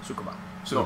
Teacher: you don't place any emphasis on any of the syllables